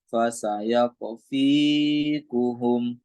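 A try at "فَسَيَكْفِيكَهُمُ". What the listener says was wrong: Kafnya kafnya jangan dipantulkan. Fasayak fikahumu.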